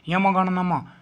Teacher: 5 वर्ग के अंतिम अक्षर जो हैं यम गण नम, है ना, वो हमारे नासिका से बोलते हैं